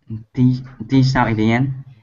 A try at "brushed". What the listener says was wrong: A T sound, actually. There is a D, but we will say, we will use a T here. Brushed.